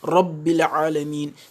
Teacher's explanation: Et vous allez voir lors de la prononciation de la lettre Ra qui est concernée, le bout de la langue vibre en entrant en contact avec le palais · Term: At-Takrir